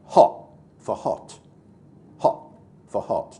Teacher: he uses glottal stops in a place that he would never do in a more public arena